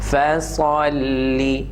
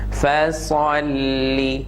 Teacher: The next word, fasalli. Again, sad is full mouth, lam is sharp, empty mouth.